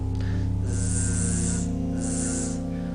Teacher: Y el otro sonido es la Z, que es Z, zumbando como el zumbido de una abeja.